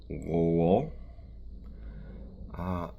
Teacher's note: Moving backwards again, the L in the preceding word, lo. Slavic L's in general tend to involve a little bit more of the tongue, so not just the tip, but more of the middle of the tongue coming up.